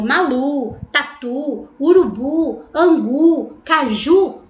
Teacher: a sílaba tônica é a última, oxítona terminada em U. As oxítonas terminadas em U, como Malu, Tatu, Urubu, Angu, Caju, nós não acentuamos.